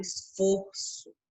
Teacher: o O é fechado, o som sai fechado, esforço. Aliás, esforço.